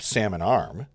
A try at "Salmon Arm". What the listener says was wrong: Salmon Arm. You don't pronounce the L ever. Alarm.